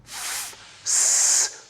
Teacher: when we restrict the flow of air as an F producing a chaotic noisy sound